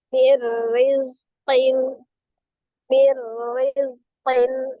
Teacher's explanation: Berarti tadinya min rizqin, maka dibaca mir rizqin, mir rizqin. Cuma perbedaan di huruf ra saja, ya. Ra-nya dibaca dengan tipis.